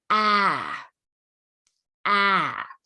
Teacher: the vowel is a little bit longer and you'll hear a little bit of more of that uh waviness or change in pitch